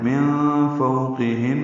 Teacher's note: من فوقہن میں نون ساکن کے بعد فا آنے کی وجہ سے اخفا ہے، فو واولین ہے، قاف پر ہے، ہن میں نون مشدد پہ غنہ ہے، وقف کرنا ہے تب بھی غنہ ہے.